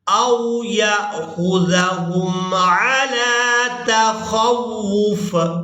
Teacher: جب ہم نے وقف کرنا ہے تو فا کو ساکن کر دینا ہے، واو کو اس فا ساکن کے ساتھ ملاتے ہوئے اس طرح سے ادا کریں گے، او یأخذہم علی تخوف۔